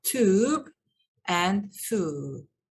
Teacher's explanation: in the words tube and hue ye is dropped it is pronounced as tube and fu ye is not pronounced